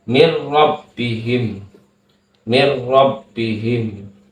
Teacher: dengan huruf ro maka hukum bacaannya adalah idgham idgham bilakuna dileburkan nunnya ini dileburkan ke dalam huruf ro